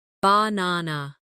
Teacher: in the word banana, the stress is on the second syllable.